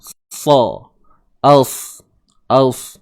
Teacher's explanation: Huruf sa ni hujung lidah ke gigi bawah. Hujung lidah ke ni, tempat tumbuh gigi sebelah bawah ni.